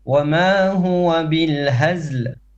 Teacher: هزل from the chest, okay, not in the throat, from the chest is ha.